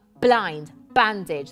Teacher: devices with you the alliteration of B blind bandage that's called bilabial plosive alliteration and it creates this aggressive tone